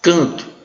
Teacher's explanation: O A, a vogal é nasal. O N, a consoante N foi usada apenas para nasalizar a vogal